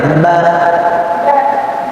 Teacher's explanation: না নড়াচড়া করলে ঠোঁটের ওয়াও উচ্চারণ হয় না। বা 2 ঠোঁটের ভেজা অংশ একসাথে লাগাইতে হয়